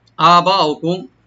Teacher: আবা উকুম, হামজাটাকে রাইট দিয়ে কালিফ টানবেন, বা এখানে মাদ্দা মুত্তাসিল 4 আলিফ পর্যন্ত টানতে পারবেন